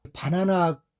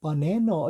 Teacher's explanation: 가운데 강세가 있는 A만 제대로 발음이 되고 다른 나머지 두 개는 발음이 안 된다고 볼 수도 있습니다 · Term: 슈아 사운드